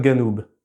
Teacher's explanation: Donc par exemple pour dire le sud, Janoub en arabe classique, en libanais on va dire Janoub. Toutefois au nord de l'Égypte on a un cas assez spécial puisque cette lettre est prononcée g